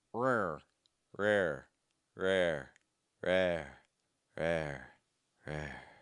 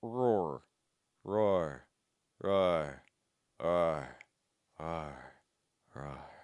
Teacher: We're going to start off really closed off, back of tongue super high, and then moving down.